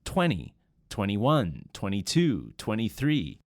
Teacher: And also, and particularly in American and Canadian English, you'll hear 20 pronounced with no D or T sound.